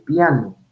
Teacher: de articular dictongo por ejemplo con vocal cerrada más vocal abierta vocal cerrada más abierta es la i es cerrada y la a es abierta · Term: diptongo